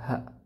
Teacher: huruf ha ini termasuk huruf yang kalau kita mengucapkannya maka udaranya itu boros ya, banyak keluar dari mulut kita. · Dia memiliki sifat hamas dan rakhawah. Jadi dialirkan aliran udara dan suaranya. Dan ha ini istifal dan infitah.